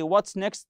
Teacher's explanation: when you say what's next the wh questions they have a falling intonation